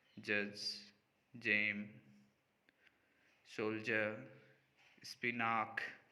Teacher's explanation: the blade of the tongue initially moves off in the position of a stop